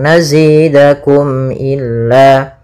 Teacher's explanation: Tidak boleh ditahan suara mimnya tapi langsung nazidakum illa. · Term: izhar syafawi